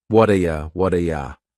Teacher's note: That T at the end of the word what is going to change to a D sound.